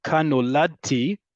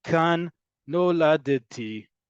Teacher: where the D and the T sort of get mushed together